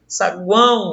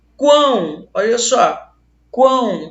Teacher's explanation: Quão, olha só, quão, pronunciei totalmente trepidação aqui nas vias nasais. Então o som está saindo pela boca e também pelo nariz. Por isso que ele é chamado de tritongo nasal, porque ele tem as estruturas que o tritongo nasal pede.